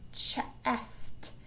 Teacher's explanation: there's a blend at the end where we hear an ST together, but they are making their own sounds